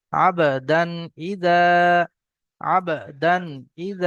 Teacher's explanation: এখানে তানবিনের পরে হরুফে হালকি ছয়টি অক্ষরের মধ্যে থেকে হামজা এসছে, গুন্না হবে না।